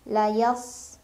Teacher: Sama ini sad tu huruf tebal ya, pangkal lidah kita naik dan lebih tebal lagi itbaq pangkal lidahnya lengket ke langit-langit. Punya ciri khas namanya safir, ada desisan.